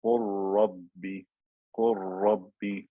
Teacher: The lam has completely disappeared because I converted it into a ra · And then it's as if I have two ra's meeting, ra with sukoon, ra with fatha. So it becomes a one ra with shadda.